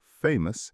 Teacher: Famous has a schwa in the final syllable.